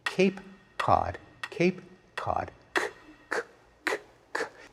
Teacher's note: In one case, the k is produced way back in the mouth. The other, it's produced much farther forward. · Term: co-articulation